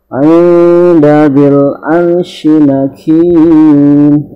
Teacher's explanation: Kita baca nun, akan tetapi ya kita sudah bersiap membaca dal. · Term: ikhfa hakiki